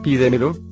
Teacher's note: la palabra pídemelo lleva la mayor fuerza de voz una sílaba antes de la antepenúltima sílaba, y según el cuadro, si se tilda.